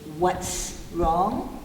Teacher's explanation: T doesn't vibrate, S does not vibrate.